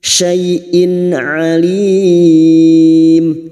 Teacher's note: tanwin bertemu Ain Idhar halq kasar tanwin dibaca jelas tanpa mendengung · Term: idhar halqi